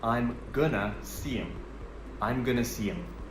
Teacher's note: Going to becomes going to. And we remove the h sound in him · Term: connected speech